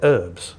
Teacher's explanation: Have you noticed that Americans don't pronounce the H at the beginning of the word herb?